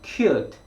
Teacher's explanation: 그런데 영어는 이 cute 라고 해서 1음절로 발음이 되는데요. cute 하고 뒤에 t 소리에 모음을 넣지 못하기 때문에 그 T 소리가 앞에 있는 Q 이 소리 밑에 들어가 있어서 cute 한 번의 덩어리로 소리가 나게 되는 거죠. 즉 한국말은 cute 2음절이었지만 영어로는 cute 한 번의 소리 나는 겁니다.